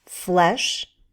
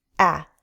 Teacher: the short e sound is more closed e the short a sound is more open a our jaw lowers